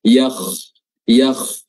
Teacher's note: sedikit bibir sedikit bulat karena pengaruh dari pengaruh dari terangkatnya lidah bagian belakangnya